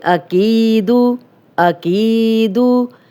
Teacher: کی یا مدہ ہے، دو حرکات لمبا کریں گے اور دال کی پیش کو لمبا ہونے سے بچائیں گے